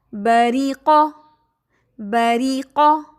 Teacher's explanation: بری را زیر ری، موٹا نہیں کرنا اسے